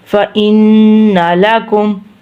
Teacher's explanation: نون کے اوپر تشدید ہے اور ان ناک میں آواز نکالیں گے، ادھر گننا کریں گے.